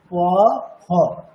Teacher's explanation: দুটি অষ্ঠ পুরোপুরি স্পর্শ করে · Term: পূর্ণ ফরের উচ্চারণটা